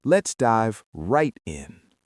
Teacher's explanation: Push the energy on the word right.